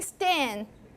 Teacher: much shorter aspiration that's why this part is so short okay so this is your t unaspirated t